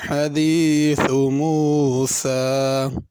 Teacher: موسیٰ سین پر کھڑی زبر ہے، اس کو ذرا کھینچ کے پڑھنا ہے، زبر کی طرح نہیں پڑھنا،